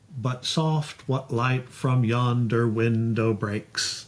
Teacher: So you got 10 syllables in the line. All the even number syllables are stressed. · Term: iambic pentameter